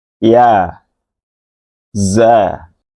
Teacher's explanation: Kalau ia dibunyikan dari bagian tengah lidah dan langit-langit mulut paling atas, maka za keluar dari bagian ujung lidah yang bertemu dengan bagian dalam gigi dari bawah.